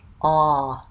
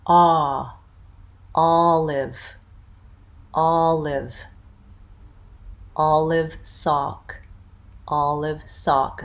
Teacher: and say ah ah that sound is ah Olive all live my lips are not round for this sound my my mouth is very open ah all live all live